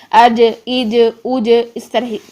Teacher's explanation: جیم کو ساکن حالت میں ادا کرتے زبان کا درمیان اوپر تالو کے ساتھ لگائیں گے، فوراً ہٹ کرنے کے بعد ہم واپس اس کی آواز کو پلٹ کر لے کر آئیں گے جس سے ہمارا قلقلہ ہوگا جیم میں